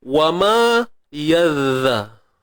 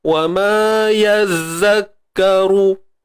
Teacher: bila keluarnya hujung lidah yang sedikit itu menjadikan suara zal ni dia lebih lembut berbanding zai ni. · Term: huruf zal